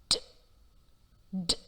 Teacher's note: The other 2 sounds t and d are produced when the tip of the tongue touches the roof of the mouth and air is blocked there for a while. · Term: plosive sounds